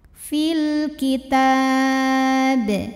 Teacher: alif lam qamariah karena alif lam menghadapi huruf qamariah yaitu Kaf maka lam sukun dibaca secara jelas atau disebut dengan izhar